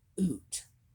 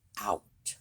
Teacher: words that sounded like oot became out, or boat became boot, simply because we changed the way we said our vowels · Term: Great Vowel Shift